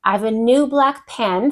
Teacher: I'm stressing black pen, the adjective and noun